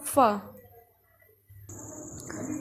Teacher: اوپر کے اگلے دونوں دانتوں کی نوک جب نیچے کے ہونٹ کے اندر والے حصے سے لگے تو یہ ادا ہوگا فا